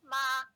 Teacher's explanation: a first tone, which is a high flat tone with a 5-5 contour